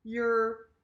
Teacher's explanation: the tip of your tongue goes a little bit backwards. You kind of curl your tongue backwards. You're. So imagine you and R and start with a yeah. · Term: R sound